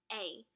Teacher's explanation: it's pronounced in the middle and central portion of our mouth